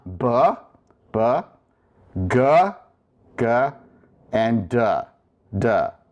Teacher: you notice that beta, gamma, and delta require less air to pronounce